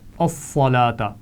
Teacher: صاد موٹا پڑھا جائے گا، لام پر کھڑی زبر ہے، کھینچ کر پڑھیں گے